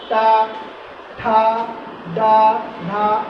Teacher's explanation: तो हमारी जिह्वा पीछे मुड़ करके, काफी मुड़ करके कहाँ स्पर्श करेगी, मूर्धा में स्पर्श करेगी। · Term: मूर्धन्य